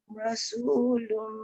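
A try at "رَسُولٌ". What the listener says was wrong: Ro tebal. Rasulum, jangan rasu. Ro.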